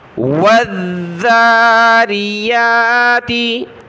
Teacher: ذال پر ہم نے زبان نکالنی ہوتی ہے لیکن اس کے اوپر یہ تشدید ہے تو اس کو سختی کے ساتھ پڑھنا ہے، اور کھڑا زبر ہے تو ایک الف کی مقدار ہم نے کھینچنا ہے۔